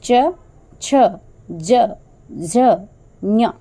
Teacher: जब हम हम च से लेकर के ञ तक का इन अक्षरों का उच्चारण करते हैं तो जो हमारा टंग है जीवा है वो हमारे ताल को स्पर्श करती है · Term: तालव्य